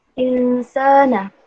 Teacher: Terdapat hukum tajwid ikhfa hakiki pada lafaz insana karena ada huruf nun sukun atau mati bertemu dengan huruf sin berharokat fathah dan cara membacanya samar